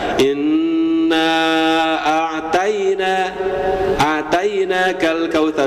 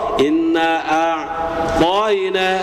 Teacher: Bedanya Bapak gini ya, huruf ta itu ketika ini lidah Pak ya, ini lidah, ujung lidah yang ke tenggorokan. Bedanya kalau huruf ta dia hanya nempel ujungnya saja, sedangkan bagian dalamnya dia landai biasa. Huruf to dia naik. Makanya ketika kita melafalkan huruf to itu terkesan rengkang.